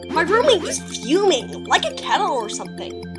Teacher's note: the keys to imitating a Valley Girl accent are the rising intonation, the vocal fry at the end of the sentence